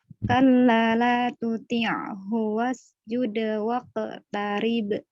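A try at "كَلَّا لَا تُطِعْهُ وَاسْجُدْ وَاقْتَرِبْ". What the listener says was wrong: Wa-nya sempurnain. Jadi wa. Kalla la tuti'hu wasjud waqtarib. Wa. Majuin bibirnya.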